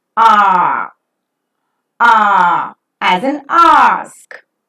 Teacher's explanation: During the articulation of this vowel, the back part of the tongue is raised to a position just above the open. The lips are neutral while the sound is pronounced.